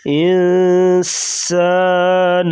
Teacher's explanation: سین سیٹی کی آواز